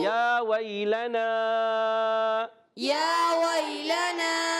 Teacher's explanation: یا ساکن سے پہلے زبر آ رہا ہے، یا لین ہو جائے گا